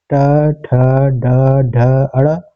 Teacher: ट वर्ग मूर्धन्य होता है